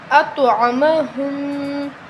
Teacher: توا حروف قلقلہ میں سے ہے تو ہم توا کو ہلائیں گے، قلقلہ کریں گے توا پہ، ٹھیک ہے؟